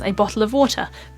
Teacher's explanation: in RP English we would say this as a bottle of water because all of the t's are pronounced